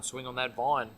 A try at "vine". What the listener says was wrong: This guy can't even pronounce the V sound.